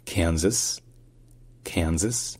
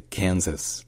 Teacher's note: dans Kansas, en fait, l'accent tonique est sur le can.